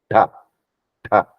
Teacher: thing is cerebral that is front of pallet there you see the tongue is going to touch the front of pallet